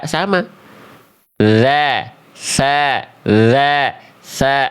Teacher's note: Makhraj huruf tsa pun sama dari ujung lidah menyentuh ke ujung gigi seri atas